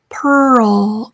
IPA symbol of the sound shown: ərl